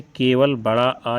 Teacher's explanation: वे स्वर जिनके उच्चारण के समय मुख सर्वाधिक खुलता है वे कहलाते हैं विवृत्त स्वर।